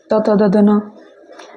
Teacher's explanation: त त द ध न किस में आता है, दंत में आता है।